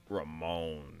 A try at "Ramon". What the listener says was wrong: Why you gotta say it like that? You gotta say his name like that. Said it in that low tone, like Ramon.